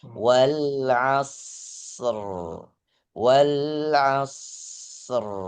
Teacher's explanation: Ingat asr huruf shad ada desisnya, jangan dipotong.